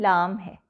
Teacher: लाम का मखर जबान के अगले किनारे से जबान की नोक तक और उसके मद मुकाबिल ऊपर के आठ दांतों के मसूड़े हैं